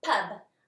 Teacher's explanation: I have a short u sound and it's closed in by the B